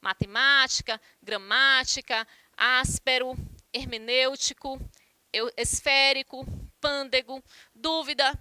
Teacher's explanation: então vocês podem observar aí que o acento recai na antepenúltima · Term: proparoxítonas